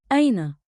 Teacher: One beat, like, in, with a light catch at the start.